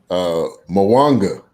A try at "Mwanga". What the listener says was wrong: No. The M is silent.